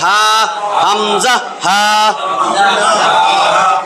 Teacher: এই যে গলার এইখান থেকে 2টা হরফ উচ্চারিত হয়। হলকের শুরু হইতে যে হরফটা উচ্চারিত হয়, হামজা হা।